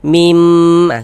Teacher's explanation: suaranya itu kita tahan, kita panjangkan sejenak sepanjang 2 harokat.